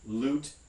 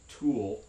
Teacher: at the beginning of a word, you get what's sometimes called a clear or a light l sound